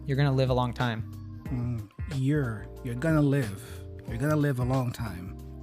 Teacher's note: So he reduces the your to your. And going to, of course, becomes gonna. The live and a becomes schwa, and they link together.